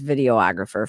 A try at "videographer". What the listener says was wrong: just say videographer.